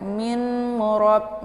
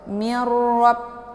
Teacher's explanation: Mirrab, karena nunnya sudah dimasukkan ke dalam bunyi ra